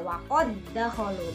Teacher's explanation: karena hurufnya double, hurufnya sama, akan tetapi yang pertama sukun, jadi seolah-olah dia berharokat tasydid. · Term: idgham mutamasilain